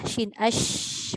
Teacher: Dia huruf shin ni dia ada bergerak pada tengah lidah. Dia tak kena gigi depan pun boleh. Cuma bunyi angin itu macam lain sikit.